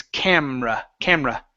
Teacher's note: we don't pronounce that E when we say it